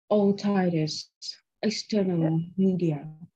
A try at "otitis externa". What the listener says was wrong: Right, so externa, there's no L at the end. So otitis externa or otitis media.